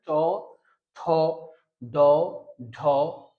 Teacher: দাঁতের পিছনে লাগতেছে দাঁতে লাগবে না এক্সাক্টলি দাঁতের পিছনে একটা উঁচু জায়গা আছে উঁচু জায়গাটার নাম হচ্ছে মূর্ধা বা দাঁতের পিছনে জায়গাটাকে আমরা বলব পশ্চাৎ দন্তমূল উচ্চারণ করেন ট ঠ ড ঢ মূর্ধন দেখবেন যে একটা জিহবার অগ্রভাগ একটি দাঁতের পিছনের উঁচু জায়গা লাগতেছে · দেখবেন যে একটা জিহ্বার অগ্রভাগ একটি দাঁতের পিছনের উঁচু জায়গায় লাগতেছে। এই উঁচু জায়গাটার নাম হলো মূলত মূর্ধা এবং দাঁতের পিছনের অংশ। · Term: মূর্ধন্য